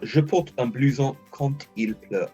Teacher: often when it's got a vowel after it, that D becomes a bit of a T sound just to make it easier to say.